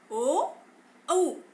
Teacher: जो ध्वनि है कंठ से सीधे निकलकर ओठों के मध्य भाग से बाहर आती है और ओ और औ का उच्चारण होता है, इसलिए इसे कंठोष्ठ ध्वनि कहते हैं।